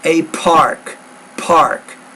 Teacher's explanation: put a little more air on that p there that's a very explosive consonant